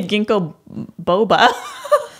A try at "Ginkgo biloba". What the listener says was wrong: There's an L. Biloba. There's a B-I-L-O. B-A.